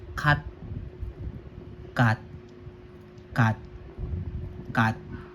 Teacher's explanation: So ang basa diyan ka ka ka ka ka ka then nilagay ko sa patchim si sa ilalim no ti here na nasa ilalim magiging tunog ti lamang so wala ng hangin no so pag binasa cut cut cut cut cut cut cut cut wala na 'yung hangin kasi letter t siya